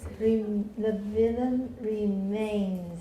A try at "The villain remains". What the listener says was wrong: But villain needs more e. The villain remains.